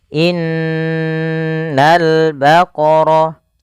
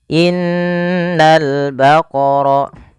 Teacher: Kita menahan di lafal huruf nun yang berharakat tasydid. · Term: gunnah